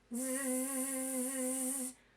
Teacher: Now notice that zzz, when you do zzz, your voice box makes a note, vibrates.